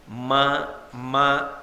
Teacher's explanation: మా మా అన్నాను అనుకోండి, 2 పెదవులు కలిస్తే తప్ప మకారము పలకదు